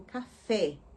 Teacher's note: quando eu falo café, você observa que o timbre é aberto